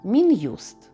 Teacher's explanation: І хоча писали його разом то все ж вимовляли роздільно